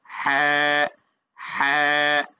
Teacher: হা উচ্চারণটা কণ্ঠনালীর মধ্যভাগ থেকে